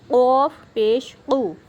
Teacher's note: اب یہ دیکھیں یہ قوف کلکلا والی کاف ہے، یہاں پہ آپ نے کلکلا بھی کرنا ہے، اس کو موٹا بھی کرنا ہے